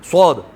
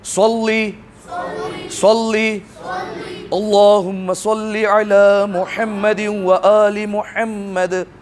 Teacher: جہاں سے سین ادا ہوتا ہے اس کو تھوڑا سا موٹا کر دیں گے, ایسے پڑھتے ہیں صاد, ٹھیک ہے, ٹھیک ہے, تھوڑا سا موٹا کر دیں گے.